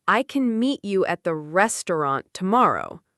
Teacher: A native speaker naturally stresses meet, restaurant, and tomorrow while words like can, you at, and the become quick and light. >> So it almost sounds like I can meet you at the restaurant tomorrow. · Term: rhythm, rhythm and stress